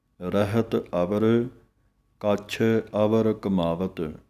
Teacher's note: ਥੋੜ੍ਹਾ ਜਿਹਾ ਇਸ਼ਾਰੇ ਮਾਤਰ ਦਲਾਈਆਂ ਦੀ ਆਵਾਜ਼ ਨਿਕਲਦੀ ਹੈ